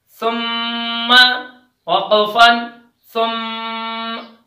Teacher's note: میم مشدد ہمیشہ غنے کے ساتھ پڑھا جاتا ہے۔ ثا میم پیش ثم، میم زبر م، ثم، وقفن ثم۔